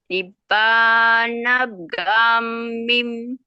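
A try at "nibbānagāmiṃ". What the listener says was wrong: Ming, M with the dot is NG. Gaming.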